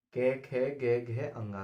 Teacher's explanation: कै वर्ग का उच्चारण है कंठ से, गले से।